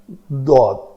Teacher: یہ طرف لسان، زبان کی جو طرف ہے، یہ اوپر والی 5 داڑوں کے مسوڑوں کے ساتھ رائٹ یا لیفٹ لگے تو یہ حرف ادا ہوتا ہے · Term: حرف حافیہ ضاد